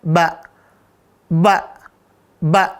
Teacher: ba ini enggak keluar udara Ustaz maka huruf ba berarti dia masuk ke jaher